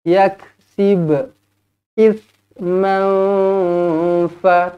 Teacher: tanwin tak selari bertemu dengan fa, ikhfa hakiki dengan dua harakat. · sib ini kena lantun sebab ini qalqalah sughra